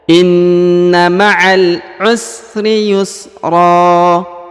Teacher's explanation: seharusnya dibaca yusron, tapi karena berada di ujung bacaan atau ujung ayat maka dia berubah kaidahnya menjadi ro. Jadi tidak dibaca lagi ron tapi dibaca ro ya.